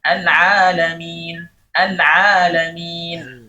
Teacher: Setelah ain ada alif. Nah, jangan sampai pada saat mengucapkan alif al-madiyah itu ada sedikit hawa yang keluar dari hidung